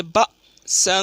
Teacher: ساتھ پڑھیں گے، جیسے لینذر بأسا شدیدا، بأسا، یہ حمزہ ہے، حمزہ ساکنہ پڑھنے میں جھٹکا ہوتا ہے